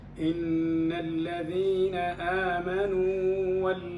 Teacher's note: الحل أن تأتي بالمد طبيعي، لأنه هنا لا يوجد إدغام، مع أنه هناك متماثلين أحدهما سبق بالسكون، يعني عندنا واو آمنوا و، الأصل الإدغام في المتماثلين إذا سبق أحدهما بالسكون إلا أن يكون حرف مد، هذا حرف مد.